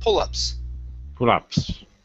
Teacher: you added an H on up, saying pull-ups. Okay, take off the H.